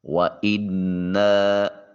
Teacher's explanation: وَإِنَّا، الف خالیہ حرکت ما قبل مفتوح، الف مدہ، نون مشدد ہونے کی وجہ سے جب الف کو جو زیر ہے جس کے نیچے اس کو نون کے ساتھ ملائیں گے تو اس وقت آواز ناک کے نتنوں میں گنگنائے گی